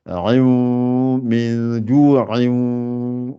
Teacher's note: Donc, ça fait ain min ju'in. Donc, on s'oblige à sortir le son par le nez.